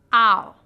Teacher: rounded position ow your jaw Rises with the tongue and closes your tongue Glides from a low position to a high near the roof of your mouth